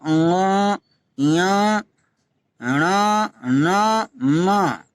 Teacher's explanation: तो अनुनासिक स्वरों के उच्चारण में मुख द्वार को बंद करके खोला जाता है किंतु साथ ही नासिका विवर भी खुलता है, नाक से इसमें बोलना जाता है